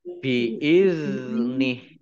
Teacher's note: zal sukun bukan kolkolah, ya, jangan dipantulkan. Biizni, ini haknya karena wakof menjadi sukun sehingga dibaca biizni, ya, pendek karena tidak ada tanda panjangnya.